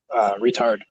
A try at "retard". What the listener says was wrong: put the emphasis on the wrong syllable for retard. It was like how you retard an engine rather than calling